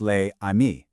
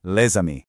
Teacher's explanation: that S jumps over and it becomes one single fluid sound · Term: liaison